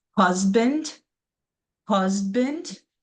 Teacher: in husband, we can hear our voices just be a little bit more stronger when we're starting that word